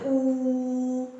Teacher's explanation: ਉਹਦੇ ਉਚਾਰਨ ਸਮੇਂ ਵੀ ਜੀਭ ਆ ਜਿਹੜੀ ਉਹ ਉੱਪਰ ਤਾਲੂ ਦੇ ਨੇੜੇ ਚਲ ਜਾਂਦੀ ਆ। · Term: ਉੱਚੇ ਸਵਰਾਂ